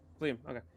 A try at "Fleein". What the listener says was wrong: No, Fleein with an N at the end.